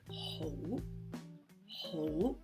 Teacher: it's ho, ho in a rising tone. It's the same rising tone as ngo.